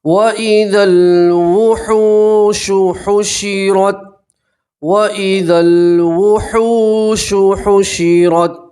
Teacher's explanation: یہ واو مدہ اس لیے آپ ایک الف کے برابر کھینچیں گے